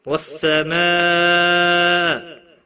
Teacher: وَالسَّمَاء بڑی مد ہے، مد متصل 5 الف کے برابر کھینچ کر پڑھیں گے